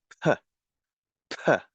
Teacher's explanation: The point is the letter P in French is not pronounced so much like the English one, which could be pronounced like a p, p, a very strong puff of sound coming through the lips